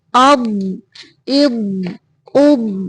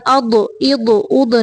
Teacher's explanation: ضاد کو ساکن کرتے ہوئے آواز کو اس کے مخرج میں مضبوطی سے بند کرنا ہے یعنی رکھنا ہے، اس کو قلقلہ نہیں کرنا، اد اد اد نہیں پڑھنا، اب اب اب۔ جہاں سے ضاد کی ادائیگی ہے وہاں پہ جا کے آواز کو بھر دینا ہے یعنی موٹا کر کے ادا کرنا ہے